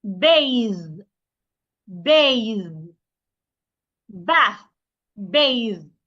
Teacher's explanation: My tongue must be outside. Ba for the voiced th my tongue must be outside also and then I make vibration